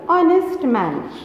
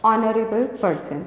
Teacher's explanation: Here H is silent and we pronounce from O. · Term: silent H